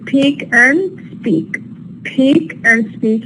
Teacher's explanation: if you transcribe the P it's going to be aspirated and in the P speak is not aspirated so they occur in two different environments One initial position and · we have two separate or two different environments for the PA in Peak it is aspirated because it occurs initially whereas in Peak it's not aspirated because it occurs after the